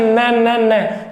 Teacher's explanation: तो न में वर्ष भाग भी काम में आ रहा है और न में नाक भी काम में आ रहा है, नासिक के भी काम में आ रहा है, तो नासिक के भी हो जाएगा और वर्ष भी हो जाएगा।